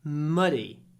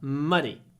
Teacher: a long M before a short vowel